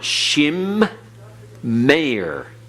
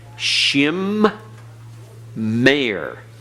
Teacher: Shim Meir. Notice the meme is pronounced twice. It's pronounced at the close of the first syllable, Shim. It's pronounced at the beginning of the next syllable, Meir. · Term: doubling Dagesh